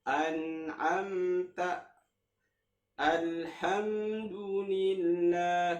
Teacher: Idhar safawi pun harokatnya satu harokat lebih.